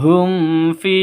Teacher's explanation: Ketika sebuah "mim sakin" bertemu dengan huruf Hijaiyah selain ba dan mim, maka disebut Izhar Syafawi. Cara membacanya, tanpa nasalisasi, tanpa pemanjangan, tanpa nasalisasi dan jangan pula dihentakkan.